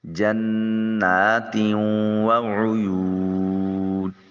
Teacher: دونوں زیروں کو واو کے ساتھ ملا کر ادا کریں گے، اور یہاں چونکہ نون کی آواز بدستور کسی حد تک قائم رہے گی، اس لیے اس کو ادغام ناقص کا نام دیا جائے گا